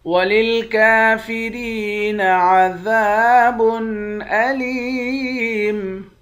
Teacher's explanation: کاف کے اوپر کھڑا زبر ہے، ایک الف کی مقدار کھینچ کر پڑھیں گے۔ را کو یا کے ساتھ ملا کر یا کو بھی ایک الف کی مقدار کھینچیں گے، یا حروف مدہ ہے۔